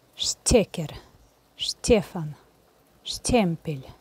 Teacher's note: Здесь «т» тоже должна быть похожа на мягкую «т». Но в этих словах обычно произносится «э». Надо постараться вместо «э» произнести «е».